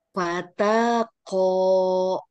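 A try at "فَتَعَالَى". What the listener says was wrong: Fataqo. Hati-hati, diulangi Bu. Fataqo. Ko-nya yang panjang.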